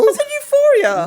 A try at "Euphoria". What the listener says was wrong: You didn't say Euphoria. You didn't pronounce the EU at all.